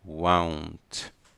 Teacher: Não é com O, won't, é won't. Nós damos uma volta na pronúncia, como se fosse um A e um U.